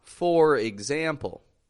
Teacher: I'm making that function word that grammar word way too strong